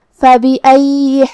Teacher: یہاں یا پہ تشدید ہے، لہذا 2 حرف کے برابر ہم یا کو پڑھیں گے